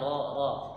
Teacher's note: Takrir itu artinya bergetar, ya. Nah, huruf apa yang bergetar? Hanya ada satu huruf, yakni huruf ro, ya. Bergetar dia lidahnya, ro, ya. Huruf ro.